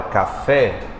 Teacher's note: na palavra café, a mais forte aqui é o fé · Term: sílaba tônica